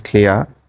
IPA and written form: klɪəʳ (Clear)